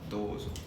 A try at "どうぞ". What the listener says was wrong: Yeah, you need to go down. Dozo.